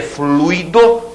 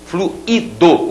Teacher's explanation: uma coisa é fluido, que é o substantivo, o fluido, você tem o ditongo, e esse aqui com hiato, fluido, o particípio do verbo fluir